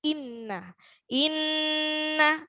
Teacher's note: Jadi harus mendengung dan tidak pakai ditekan. Bukan inna amma tapi cukup mendengung.